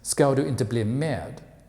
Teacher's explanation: In Swedish, you can hear the nasalization on the last word med in the sentence ska du inte bli med.